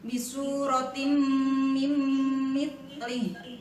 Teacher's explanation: Maka cara membacanya adalah melebur dan berdengung. Meleburkan bunyi tanwin ke huruf sesudahnya, yaitu mim, kemudian dibaca dengan berdengung. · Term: idgham biguna